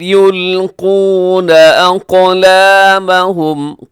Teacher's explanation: قاف موٹا رکھیے گا، یلقون اس میں بھی، اور قاف کلکلا بھی ہے کیونکہ ساکن ہے